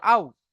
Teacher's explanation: মাদ্দে লিন, নরম আওয়াজে তাড়াতাড়ি পড়তে হবে।